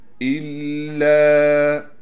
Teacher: لا يذوقون فيها بردا ولا شرابا الا، حمزہ کو لام سے ملائیں گے، لام پر تشدید ہونے کی وجہ سے تھوڑا ٹھہراؤ کریں گے، لام کے بعد الف ہونے کی وجہ سے لام کو کھینچیں گے بھی